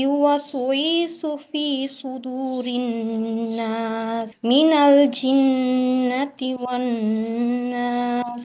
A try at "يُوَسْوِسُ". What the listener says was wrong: আচ্ছা আপু, ইউয়াস উইসু ওয়াও টান হয়ে গেছে। ইউয়াস উইসু, উই টান হবে না, ঠিক আছে?